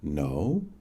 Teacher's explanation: Spoken with a rising inflection